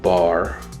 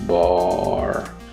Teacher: obviously in the second instance i'm pronouncing the word longer because i'm extending i'm lengthening the duration of the vowel